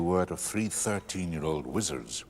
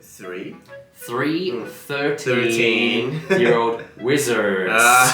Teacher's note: In this case, the R is very rolled. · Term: rolled R's